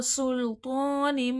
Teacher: سین میں صفیر ہے، سختی سیٹی کے ساتھ پڑھا جائے گا